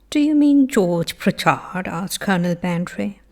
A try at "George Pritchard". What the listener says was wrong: Okay, this pronunciation of Pritchard, you haven't got it perfectly right. Let's see. Firstly, I think your major problem is the stress.